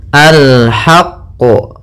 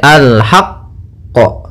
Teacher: sebelum memantulkan huruf qaf yaitu kita tekan dulu huruf qaf karena huruf qof di sini huruf yang bertasdid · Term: Qalqalah kubra